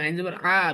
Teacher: চাপ দিতে হবে গলায়, চাপ দিয়ে বের করতে হবে